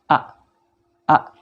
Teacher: Adapun ketika hamzah ini atau A ini sukun, maka kedua pita suara kita tertutup rapat. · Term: hamzah sukun